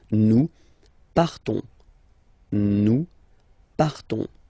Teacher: you don't pronounce the S, you just have this on sound nasal